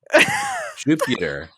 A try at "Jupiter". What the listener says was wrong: No, you're adding another I.